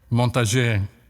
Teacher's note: The N has to be a nasalization.